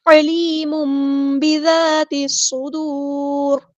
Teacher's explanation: ذال کو باریک، یہ زا نہیں ہے، ذال ہے، نرمی سے ادا کرنا ہے، لائٹ لیٹر ہے،